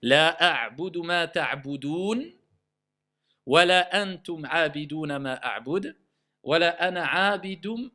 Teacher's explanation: Quand je m'arrête, la dernière voyelle, je ne la prononce plus.